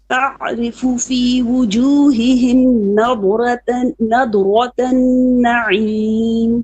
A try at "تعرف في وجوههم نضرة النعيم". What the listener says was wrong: No, you're making a little bit of qalqala on it. So you leave the dot stuck. You know the tongue is stuck to the palate, like almost to the palate. نضرة نعيم.